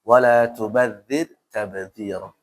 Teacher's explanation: Tapi ingat rasukun sebelumnya kasrah atau baris bawah. Dibaca tipis.